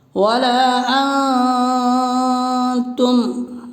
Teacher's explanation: وَلَا أَنْتُمْ، حرف مد کے بعد حمزہ دوسرے کلمہ میں ہے، مد منفصل ہوگا، اس لیے مد منفصل کو 3 الف کے برابر کھینچ کے پڑھیں گے